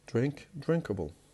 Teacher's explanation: The stress will not be changed. The stress will be kept on the first syllable, the original word. So this type of suffix would not change anything in stress placement.